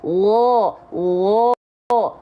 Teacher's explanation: jadi enggak ada bibir-bibir monyong ya cukup angkat bagian pangkal lidah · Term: istila